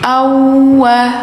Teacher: si waw ini langsung dimasukkan ke waw yang kedua. Ini hukumnya idgham mutamasilain.